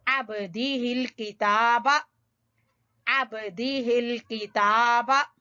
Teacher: अब बा के ऊपर कलकला होगा, हल्का कलकला